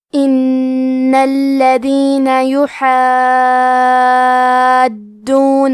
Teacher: کلمت ان میں حرف نون پہ تشدید ہے تو ہم 2 حرف کے برابر نون کو پڑھیں گے کیونکہ تشدید کی اصلیت 2 حرف ہے.